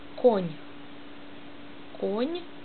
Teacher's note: N ist mild am Ende.